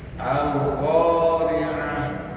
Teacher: Makhrajnya ain di tengah tenggorokan. Disebut wasatol halqi.